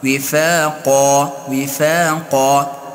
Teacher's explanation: در قا چون الف ساکن مقابل آن حرف مفخم است که حرف قاف، الف هم مفخم.